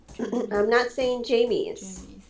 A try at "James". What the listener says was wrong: I'm saying James. J. S. Not Jamie's. You're adding a strange sound. Not Jamie's. There's no Jamie's. What does the letter M make? The letter M goes and the letter S makes a S. So it's J. Not Jamie's. You're adding something here. There's no E. There's an E in the name, but we don't say it.